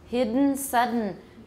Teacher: don't break off the voicing in the middle it's not hidden that's that's voiceless the voicing doesn't stop and · Nasal plosion occurs in English at the ends of words such as hidden and sudden.